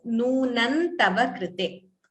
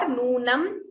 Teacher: Anuswara followed by ta. We could optionally combine it as nunan tava krite, or nunam, complete Anuswara is also correct.